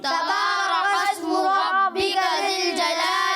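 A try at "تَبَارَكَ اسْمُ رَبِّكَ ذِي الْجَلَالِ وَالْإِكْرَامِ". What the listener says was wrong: اچھا کلکلا نہیں کرنا، ٹھیک ہے، کاف میں کلکلا نہیں ہوتا، ٹھیک ہے.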